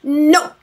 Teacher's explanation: he'll hold on to the N for longer than the O of that word